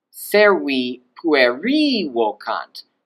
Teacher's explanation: I'm going to even stress accent also the last syllable. So not just the pitch going up, but also I'm going to stress accent that.